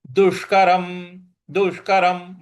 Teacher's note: दु पर छोटी इ की मात्रा है। और षट्कोण वाला श है तो जीभ को मूर्ध्वा पर लगा के बोलना है। दुष्करम दुष्करम म के बाद हलंत है इसलिए दुष्करम नहीं बोलना है।